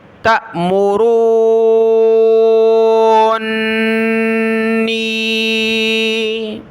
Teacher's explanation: سورۃ الزمر کی آیت نمبر 64 میں یہ لفظ ہے تَأْمُرُونِّی، حمزہ ساکنہ جھٹکا دیا، تأمرو، را پر مد ہے، اس کو کھینچیں گے، را کو کھینچتے ہوئے نون کے ساتھ ملایا